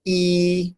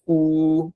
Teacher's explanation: E with our lips spread versus Oo with our lips together and rounded